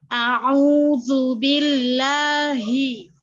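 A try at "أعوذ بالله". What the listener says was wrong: Sudah bagus, tapi kalimat a'udzu, hamzanya sama ainnya harus beda, harus jelas bedanya.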